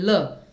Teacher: और ये ध्वनियां नहीं केवल एक ही ध्वनि होती है, पार्श्विक होती है ध्वनि ल, क्योंकि पार्श्व क्या होते हैं, यानी हम कहते हैं ना वो मेरे बगल से निकल गया। तो ये जो जीभ है आपकी, जिह्वा, तो उनके दोनों के साइड से आपकी हवा निकलती है जब आप बोलते हैं ल, तो आपको ऐसा लगता है कि दोनों साइड्स का यूज हो रहा है सही से। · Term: पार्श्विक ध्वनि